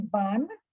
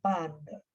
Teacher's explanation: we are not saying ban we are saying band we are pronouncing the d at the end